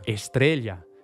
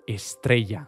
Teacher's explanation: la doppia LL latina di parole come stēlla in spagnolo è diventata un nuovo fonema, /ʎ/, /esˈtɾeʎa/, che oggi però viene sostituito da molti con /ʝ/.